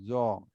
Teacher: জিহ্বার আগাটা উপরে দাঁতের আগায় লাগতে হবে